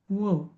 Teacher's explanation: वकारस्य दंतोष्ठम, व दात आणि ओठ लागतं.